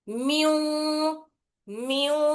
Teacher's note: الغنہ کا قاعدہ ہوتا، تو یہاں پر بھی ادغام کرنا ہے، نون کی آواز کو واو میں ملانا ہے اور تھوڑی سی نون کی آواز باقی رکھنا ہے اور دو حرکت غنے کے ساتھ اس کو ادا کرنا ہے ، میم نون واو زیر، میو میو، ایسا پڑھنا رہتا اس